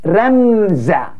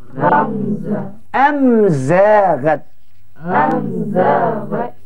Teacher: Kita dengar dapat mim jumpa dengan zai ni tak ada dengung pula.